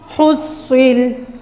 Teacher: صاد کو ہم نے موٹا کرنا ہے، اس میں سین کی آواز نہ آئے، اس میں فا کی آواز نہ آئے۔